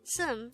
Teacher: pronounced as sum instead of sup, because the biup character is followed by a nian character on the next syllable